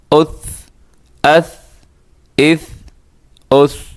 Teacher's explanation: اس کے اندر آپ نے پوری کوشش کرنی ہے کہ اس میں سیٹی کی آواز نہ آئے